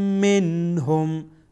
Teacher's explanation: نون ساکن در اینجا اظهار میشه، یعنی ظاهر خوانده میشه